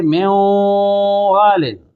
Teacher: جیسا کہ میں والن، اب نون ساکن کے بعد واو آیا تو نون کا واو میں ادغام ہو رہا ہے مگر غنہ کے ساتھ ہو رہا ہے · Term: ادغام متقاربین ناقص